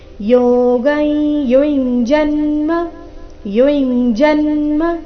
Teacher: ಅನುಸ್ವಾರದ ಉಚ್ಚಾರಣೆ ನಾಸಿಕ ಯ ರೀತಿ